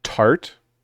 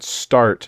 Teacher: if you say tart and start, the T is actually two different sounds. One's aspirated, one isn't.